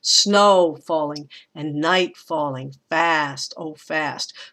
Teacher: the words that get emphasized in that line are snow night fast and once again fast